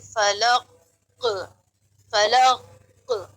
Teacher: قاف کے بعد کوئی دوسرا حرف موجود نہیں ہے، ایسی صورت میں قلقلہ کی مقدار بڑھ جاتی ہے · یہاں پر کیا ہے کہ جو قاف کا مخرج ہے وہاں پر جنبش ہونی چاہیے، حرکت ہونی چاہیے